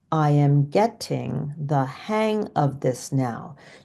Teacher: Do you see how hang never gets higher than I am or that ting the second syllable of the word getting? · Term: pitch rise